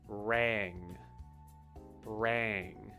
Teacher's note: the A sound is more of that flat, open A sound rather than ah. It's ah. It's back deeper in your throat.